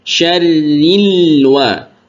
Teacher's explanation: Lam sukun seperti yang sudah kita sampaikan, ditekan membacanya. Syarril wa, tidak ditahan.